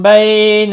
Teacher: بئی یا لین ہے، تھوڑا نرمی کے ساتھ کھینچ کر ادا کریں گے